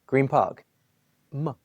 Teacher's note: Your lips come together, which means it changes into an M sound